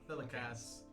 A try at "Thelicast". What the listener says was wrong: No T at the end.